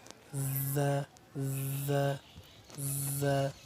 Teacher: জিহ্বার আগা, সামনের নিচের দুই দাঁতের পেট ও আগার সঙ্গে লাগাইয়া যা উচ্চারিত হয়